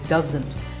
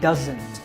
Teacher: There's a Z sound there. It's not an S sound